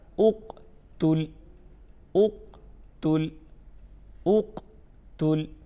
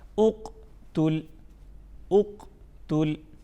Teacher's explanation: क़ाफ़ में हरूफ क़लक़ला में से है, तो हम इसमें ये करेंगे कि आवाज़ में जुम्बिश पैदा करेंगे, हिलाएंगे नहीं, हर्फ को हमने हिलाना नहीं है, सिर्फ हम इसमें जुम्बिश पैदा करेंगे ताकि इसमें प्रॉपर वजाहत हो।